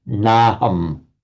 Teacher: That is a signal to the student that this is by Sandhi a merger of na plus aham. Na aham, the two vowels by Sandhi just merge into one to naham.